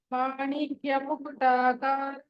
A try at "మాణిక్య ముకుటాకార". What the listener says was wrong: మాణిక్య ముకుటాకార కార అని కట్ చేయాలి కారా అనుకోరు కార మాణిక్య ముకుటాకార